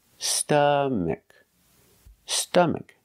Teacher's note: put the stress on the first syllable stomach